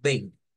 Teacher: en una I con una virgulilla nos está diciendo aquí suena es una vocal y nasalizada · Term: nasalización